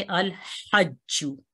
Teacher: ये लाम जो है इसको इजहार से पढ़ेंगे, जाहिर करके पढ़ेंगे, इसका इदगाम नहीं होगा और इसलिए इसको हम इस तरह पढ़ेंगे अल हज्जू।